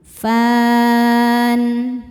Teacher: Mad thabi'i-nya alif didahului fathah, huruf yang disukunkannya nun, maka fa-nya panjang boleh dua atau empat atau enam harakat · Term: mad aridh lisukun